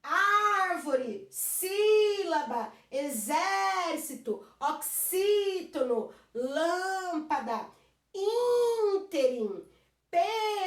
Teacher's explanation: Se é a última, não. Se é a penúltima, não. É a antepenúltima que é mais forte. Você põe um acento lá.